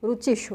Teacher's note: इकारांत में मूर्धन्य शकार आ रहा है। इकारांत दोनों में ही, ह्रस्व इकार दीर्घ इकार दोनों में ही मूर्धन्य शकार आ रहा है।